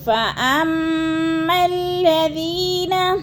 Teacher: فَأَمَّا کی میم مشدد ہے، سختی سے جمع کر پڑھیں گے ، اور میم کو لام کے ساتھ ملا کر ادغام کرنا · الف، یعنی الذی والا الف، یہ دونوں نہیں پڑھے جائیں گے، میم مشدد کو لام مشدد کے ساتھ ملا کے ہم نے پڑھنا ہے · ذی کو بھی تھوڑا سا لمبا کر جانا، ادھر یا مدہ ہے